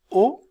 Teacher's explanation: c'est une voyelle postérieur cela veut dire que lorsque je prononce la voyelle o ma langue situé plus en arrière sentez la différence si je dis e je sens que ma